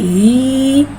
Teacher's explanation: या साकिन है, या साकिन से पहले ज़ेर आ रहा है, या मद्दा हो रहा है, लिहाजा या मद्दा को एक अलिफ यानी 2 हरकत के बराबर खींच के पढ़ेंगे